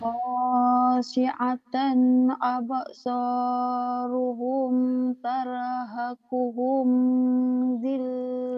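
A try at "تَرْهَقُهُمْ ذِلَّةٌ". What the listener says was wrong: Tarhaquhumnya idhar. Tarhaquhum dhillah. Jangan ditahan.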